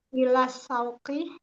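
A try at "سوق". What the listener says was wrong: bukan syauk. Kalau syauk itu kerinduan. Masa suruh pergi kerinduan.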